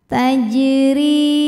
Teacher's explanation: maka Jim ini kita pantulkan bacanya dengan pantulan yang kecil tajri huruf Dho dibunyikan secara tarqik karena D berharakat kasrah cara bacanya D dibaca dengan tipis tajri RI hukumnya adalah Mad Thobi'i zohiri karena ada Ya Sukun · adalah Mad Thobi'i zohiri karena ada Ya Sukun sebelumnya berharakat kasrah cara bacanya huruf ro dibaca panjang dua harakat